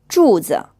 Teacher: you're pushing your lips forward and they're in a round shape.